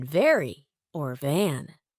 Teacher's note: the V sound is made by placing your upper teeth on your lower lip and vibrating